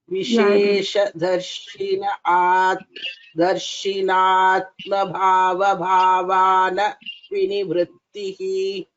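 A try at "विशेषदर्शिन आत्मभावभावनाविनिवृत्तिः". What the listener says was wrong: Vishesha darshina atma bhava bhavana vinivrittihi. Try to focus on the dirghas. Vishesha darshinaha atma. So it's not Vishesha darshinatma, right? Vishesha darshinaha in atma. So try to say the distinction between these two.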